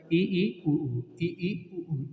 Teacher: ई ई उ ऊ को बोलने पे पूरा मुंह हमारा बंद रहता है। इसकी अपेक्षा जो है वो आपका मुंह थोड़ा सा क्या होगा, खुला होगा, उसे अर्ध समृद्ध कहेंगे। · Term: समृद्ध स्वर